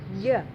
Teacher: Nah itu jelas banget dia bukan sifatnya jahar, karena jim itu sifatnya jahar bukan hamas, jadi nggak boleh ada aliran nafas yang keluar